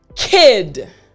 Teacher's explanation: The back of your tongue is basically hitting the roof of your mouth.